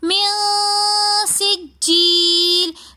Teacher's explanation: بحجارتم، پھر بحجارتم میں میم کے بعد نون ساکن آ رہا ہے اور آگے پھر سین آ رہا ہے اخفا کے حروفوں میں سے، تو ہم یہاں پر بھی غنہ کر کے پڑھیں گے